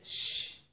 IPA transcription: ʃ